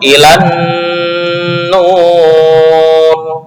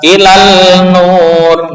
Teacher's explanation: Poin yang keempat, di pembagian dua kata dari huruf yang bertasydid, idgham lam syamsiyah ke dalam nun secara ijma